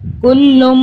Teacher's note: میم کے اوپر تشدید، میم پہ ہم گننا کر رہے ہیں 2-3 سیکنڈ کا